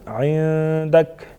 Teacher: نون ساکن اخفا کریں گے یہاں پر. عندک یعنی آواز کو ناک میں چھپا کے پڑھیں گے. عندک. لئن کشفت لئن اگین یہاں پر بھی نون ساکن کا اخفا ہوگا.